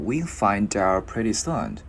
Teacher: Chữ D gắn qua chữ out.